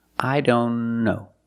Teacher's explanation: Here the T is between consonants, so we don't pronounce it.